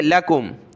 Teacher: اس کو کھینچنا نہیں ہے، لاکم نہیں بلکہ لَكُمْ